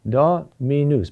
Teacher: So this is a binary rhythm ending on the last syllable